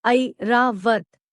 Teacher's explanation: It is a combination of the vowels a and e. It should be pronounced as a quick glide from a to e. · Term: combination vowel I